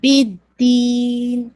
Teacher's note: جو دین کو آپ اسٹریچ کریں گے 2 4 6, میک شور کیجیے گا نیزل ساؤنڈ آپ کا ایٹ دا اینڈ آئے